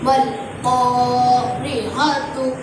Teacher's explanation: الف لام تعریف کے بعد حروف قمری کے 14 حرفوں میں سے قاف آیا ہوا ہے، اس لیے یہاں پر الف لام تعریفی کا اظہار ہوگا، یعنی لام کو ساکن کر کے پڑھیں گے